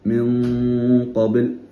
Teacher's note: സാക്കിന നൂന് ശേഷം ഖാഫ് വന്നാൽ ഇഖ്ഫ ആണ്, മറച്ച് മണിക്കണം. അതോടുകൂടെ തന്നെ സാക്കിന നൂനിൽ തന്നെ ആ നൂന് ഉച്ചരിക്കുമ്പോൾ തന്നെ മണിക്കുമ്പോൾ തന്നെ ഖാഫിന്റെ ഇസ്തിഅല നൂനിലേക്ക് വരണം.